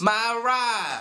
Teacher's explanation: the pronunciation of the vowel in the words like my and ride as a long a such as my ride. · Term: long ah